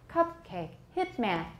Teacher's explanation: hitman are they stressed yes but are they really long no they're short but they have extra respiratory energy and so they are felt to be stressed and also pitch cupcake hits man we can hear the pitch